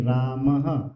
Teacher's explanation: ये विसर्ग के लिए ह की ध्वनि निकलती है